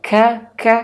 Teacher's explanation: Nah, nun sukun jumpa dengan huruf kaf. Kaf itu makhrajul huruf, makhrajnya, makhrajul hurufnya adalah di pangkal lidah. Di pangkal lidah tersentuh kepada langit-langit atas. Maka ka ka, ketika nun sukun persiapan ke huruf kaf, maka bunyinya menjadi eng ya.